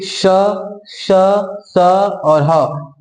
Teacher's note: जिस व्यंजन का उच्चारण करते समय मुंह से गर्म वायु निकले उससे उष्म या संघर्षी व्यंजन कहते हैं